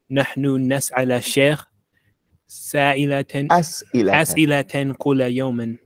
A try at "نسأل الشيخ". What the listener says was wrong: Look at two pronunciation things we want to get straight. Don't say نسأل الشيخ. نسأل الشيخ. It's like it's نكرة. نسأل الشيخ. It's the شيخ. When you say نسأل الشيخ, like we ask a شيخ.